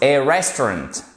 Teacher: On accentue sur la première syllabe. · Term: accent tonique